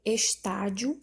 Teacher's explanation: A letra C, estádio, a sílaba tônica é o tá e ela também é uma paroxítona